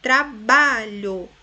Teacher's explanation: Veja que ba é a sílaba mais forte, a penúltima, então a palavra paroxítona. Regra, de trás para frente, é a penúltima, a mais forte, então paroxítona.